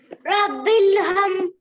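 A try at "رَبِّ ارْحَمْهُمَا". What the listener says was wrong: बिल नहीं बार आजेर बिर, बिल क्यों बोलते हैं? बार आजेर बिर, बारा बिर, हमहुमा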